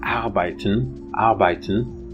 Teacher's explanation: in german there is a variety of r which is actually a vowel lowered open mid central vowel